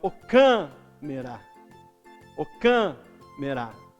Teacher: O can é a sílaba mais forte. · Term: sílaba tônica